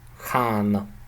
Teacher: It's actually the tip of your tongue reaches your alveolar region, reaches your upper teeth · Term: dental nasal